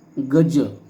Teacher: पहिला जो शब्द आहे तो तालव्य आहे. गज म्हणत असताना आपली जीभ टाळूला लागते.